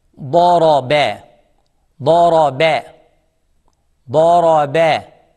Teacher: Dad is heavy, ra is heavy, and ba is soft. Smile. Daraba.